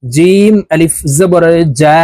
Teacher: জিম হরফ জিহ্বার মধ্যখান থেকে উচ্চারণ করতে হবে, এক আলিফ টেনে পড়বো।